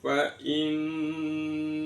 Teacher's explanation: nun tasydid dibaca gunnah mendengung